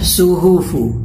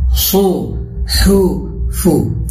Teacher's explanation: ہا ہے تو حلق سے نکالیں گے